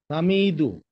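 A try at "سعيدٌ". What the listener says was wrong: না না, এই যে কি দেখতে পাচ্ছেন, সিন। সাইদুন, এটা হবে, হ্যাঁ, সাইদুন। হ্যাঁ, সাইদুন। সাইদুন তানবিন নিয়েছে, ঠিক আছে।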